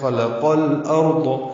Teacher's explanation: خلق قوف پر ہے اور اس کو الارض کے لام سے ملائیں گے